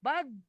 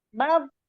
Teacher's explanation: si lidah ke gigi geraham. Bukan lidah yang ujung, tapi lidah yang di pinggir itu.